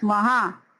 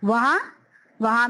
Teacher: اگر آپ لکھتے ہیں لفظ وہاں، وہاں میں بھی دیکھیے نون کی آواز نہیں ہے. وہاں، وہاں میں نون غنہ آ رہا ہے، اس میں نون کا نقطہ نہیں.